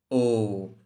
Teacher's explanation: ধ্বনিটা আসছে একদম কণ্ঠ থেকে মানে গলার ভিতর থেকে আসছে এবং সাথে সাথে আপনার অষ্ঠ মানে ঠোঁটকেও এর সাথে একটা গোলাকৃতি প্রদান করতে হচ্ছে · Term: কণ্ঠ ওষ্ঠ ধ্বনি